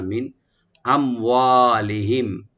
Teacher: মিন এখানে নুন সাকিন আমরা এজাহার করব, এখানে গুণা হবে না